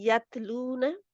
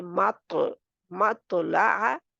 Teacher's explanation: त की आवाज बारीक होती है जैसे यत लून और त की आवाज मोटी होती है